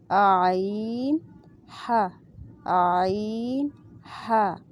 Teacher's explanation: عین، ہا، عین، ہا یہ حلق کے بالکل درمیان سے ادا ہوتے ہیں